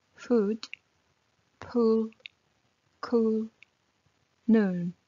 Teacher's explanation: Екі O қатар келгенде, яғни double O болған кезде, ол ұзақ созылыңқы айтылатын U болып оқылады.